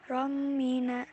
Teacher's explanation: Romina idgham biguna fatha tanwin bertemu dengan mim. Harokat fatha tanwin dileburkan dan seolah-olah mim bertasdid, membacanya disertai dengung.